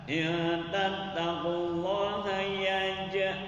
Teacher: qalqalah sugro, pantulan suara yang sederhana. Karena huruf qalqalahnya matinya asal yaitu huruf jim.